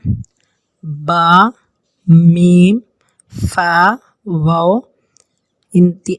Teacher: با اور میم، فا اور واو، یہ چاروں حروف شفویہ ہیں، یہ ہونٹوں سے نکلتے ہیں، اس لیے انہیں شفویہ کہا جاتا ہے۔